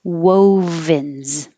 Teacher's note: after you make your w you have to make a v so you have to unround a bit so your top teeth can touch your bottom lip wovens and then a z at the end wovens february forget